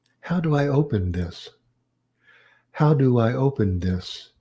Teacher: You hear the falling intonation on this.